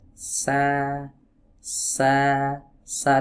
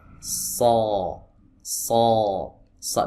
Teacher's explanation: Sa sa sa rileks bagian belakangnya, tapi huruf shad dia menegang.